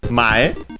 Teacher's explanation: mae, accented on the first syllable